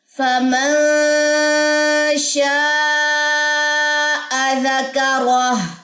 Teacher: را موٹی پڑی جائے گی, الٹا پیش ڈراپ ہو جائے گا, ہا ساکنہ رہ جائے گی اور ہائے ساکنہ جو ہے وہ را کی زبر سے سپورٹ لیتی ہے.